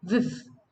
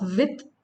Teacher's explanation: Then in Cockney accent, with is pronounced viv. Okay, viv. Not with, it's viv.